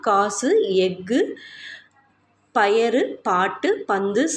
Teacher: சொல்லோட இறுதியில வரப்ப ஒரு மாத்திரைக்கு பதிலா அரை மாத்திரையா ஒளிக்குது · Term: குற்றியல் உகரம்